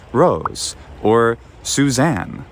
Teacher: when we have an s between vowels it often will sound like a z